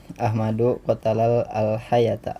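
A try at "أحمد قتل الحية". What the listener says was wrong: Nah, qatalal hayata. Kan udah alnya udah dibaca ya. Ahmadu qatalal hayata. Ahmadu qatalal hayata.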